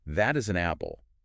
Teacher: your pitch drops at the end. It signals a statement